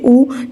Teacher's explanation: ऊ जब भी आप बोलेंगे तो आपके होठ जो है गोल हो जाएंगे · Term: वृत्तमुखी